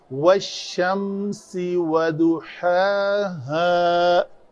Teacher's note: الشمس دیکھا آپ نے، یہ لام جو ہے شین حروف شمسی میں سے ہے، تو اس لام کو ہم نے نہیں پڑھا، اس لام کا اس کے اندر ادغام ہو چکا ہے، تو اس کو ہم پڑھیں گے وَالشَّمْسِ وَضُحَاهَا۔